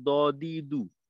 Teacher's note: আর এই পার্থক্য হওয়ার কারণ হলো, প্রথমটা যখন আমি বললাম দ দি দু, ওই সময়টাই কিন্তু আমি জিহ্বার আগা সামনের উপরের দুই দাঁতের গোড়ার সঙ্গে লাগাই তারপর উচ্চারণটা করছি